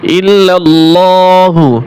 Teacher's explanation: আল্লাহর লাম মোটা করে উচ্চারণ করতে হবে